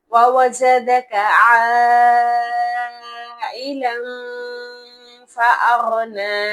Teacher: اب آپ یہاں پر نوٹ کریں کہ الف مدہ کے بعد اسی لفظ میں حمزہ آ رہا ہے، تو اس لیے یہاں پر مد متصل ہوگی